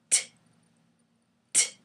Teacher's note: So the tongue is partially blocking the sound. It's blocking it and then it's releasing the sound. T, t. So it is partially blocked by the tongue.